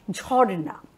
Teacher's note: র আর ন এর মাঝখানে কোন স্বরধ্বনি না থাকলেও রয়েছে একটা দলের সীমানা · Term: গুচ্ছ ধ্বনির